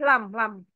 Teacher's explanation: kalau lam sedikit lebih belakang bersama dengan tepi lidah yang kanan kiri itu yang menyentuh gigi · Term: huruf lam